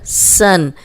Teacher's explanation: یہ سیٹی والا حرف ہے، اس میں سیٹی کی آواز آئے گی۔